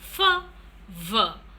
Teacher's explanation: It can also be labiodental when we have the upper front teeth and the lower lip being used, like in the production of f, v.